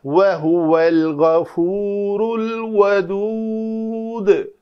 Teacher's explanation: ہم نے اس دال کو ساکن کیا تو قلقلہ کیا، ادروائز اس کے اوپر پیش تھی۔